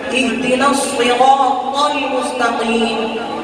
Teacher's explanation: صاد کو بھی پر کرنا ہے. اهدنا الصراط نہیں کہنا ہے.